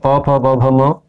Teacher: जिन जिन जिन ध्वनियों को बोलने में हमारे ओष्ठ आपस में टकराते हैं उनका उच्चारण स्थान ओष्ठ है।